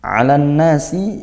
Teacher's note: huruf syamsihnya nun, maka ditasydidkan maka dia dibaca ghunah, didengungkan seperti itu